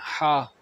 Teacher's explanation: ہا کو ہم نے ہا حلق کے درمیان سے نکالنا ہے